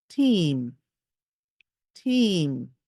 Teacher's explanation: I'm saying the E sound, but I'm not really smiling. And it affects the way the sound is heard. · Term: long E